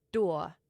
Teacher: in a word like door, you drop the R and you put in a schwa. So, instead of door or dool, it's doa.